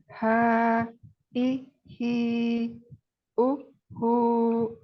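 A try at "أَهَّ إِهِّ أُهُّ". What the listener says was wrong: Dialirkan lagi. Ya, mengalir. Nah, gitu ya aslinya. Karena huruf tasdid ya. Nah, huruf tasdid ini pada dasarnya adalah dua huruf ya. Dua huruf yang sama ya. Huruf pertamanya itu sukun dan huruf keduanya itu berharokat. Huruf tasdid. Jadi ya, yang pertama tadi kalau disukunkan H ini berarti dialirkan suaranya ya.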